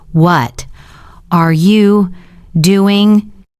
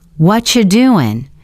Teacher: What are you becomes what you and doing sounds softer doing. So instead of what are you doing? It sounds like what you doing. · A native speaker would say, "What you doing?" Hear that? What are you becomes whatcha, and doing sounds softer, doin'.